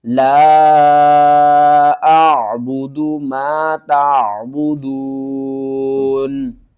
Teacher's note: وقف کی صورت میں نون کو ساکن کر دیں گے